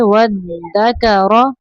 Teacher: دال پر تشدید ہے، واو کو دال سے زور سے ملائیں گے